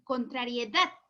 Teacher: por lo tanto la sílaba tónica está en la última sílaba